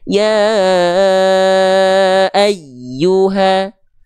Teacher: kurang kuat ya jadi Nab itu penekanan yang lebih kuat sehingga huruf ya bertasdid ketika dilafalkan ini nadanya seolah lebih kuat dan lebih tinggi dibanding sekitar-sekitarnya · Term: nabroh